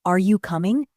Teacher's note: has a rising tone at the end